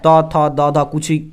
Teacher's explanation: देखिए त थ द सब में कहां हम लोग जीभ टच कर रहा है, दांत पे, तो दंत हो जाएगा गुरुजी, ऑप्शन बी सही उत्तर याद रखेंगे दंत। त वर्ग का उच्चारण स्थान दंत होता है